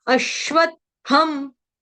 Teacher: अश्वत में आधा त फिर अधिक थ यानी पूरा थ फिर अनुस्वार का उच्चारण हलंतम यहां पे गलती से अश्वत्थम की बजाय अश्व थम हो जाता है।